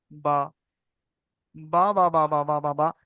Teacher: দুটো ঠোঁটের উপর নিচে দুটো ঠোঁটের ভিজে জায়গা থেকে বা বাহির হয়, মানে উচ্চারণ হয় ওখান থেকে, এই দেখেন বা, বা বা বা বা বা বা বা।